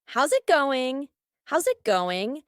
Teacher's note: linking the S plus a vowel